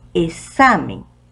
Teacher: la segunda sílaba es la que suena más fuerte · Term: sílaba tónica